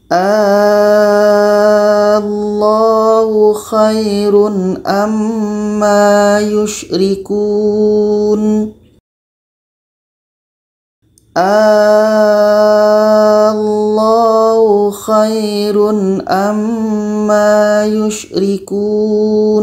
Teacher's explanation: Jadi kita panjangkan dulu 6 harkat baru disambut dengan tasydid atau syaddah.